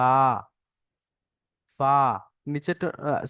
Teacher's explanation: নিচের ঠোঁটের ভিজে অংশ এবং সামনের উপরের দুই দাঁতের আগার সঙ্গে লাগিয়ে উচ্চারণ হয় ফা।